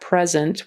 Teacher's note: present with the accent on the first syllable it's a noun